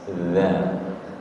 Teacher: Za ujung lidahnya menyentuh ujung gigi seri atas.